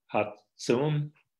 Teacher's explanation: notice also Hats has a geminate or long ts. That's another feature of interest in Musaler dialects.